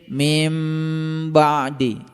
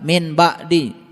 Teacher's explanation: Ketika nun mati ketemu dengan ba, dibacanya mim, didengung sedikit